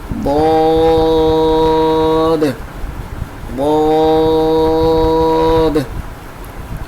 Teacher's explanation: کسی ایک سائڈ سے آپ کی زبان اٹھے گی اور ضاد کا جو لفظ ہے وہ ادا ہوگا۔ اور چونکہ یہ حروف مستعلیہ میں سے ہے تو تھوڑا سا موٹا پڑھیں گے، جیسے ضاد ضاد۔